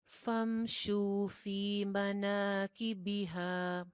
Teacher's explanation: फी या मद्दा है, शू भी वाव मद्दा था, दोनों की हरकत सेम रहेगी, एक एक अलिफ के बराबर